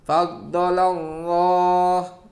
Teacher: salah satu contoh lam jalalah dibaca tafkhim, dibaca tebal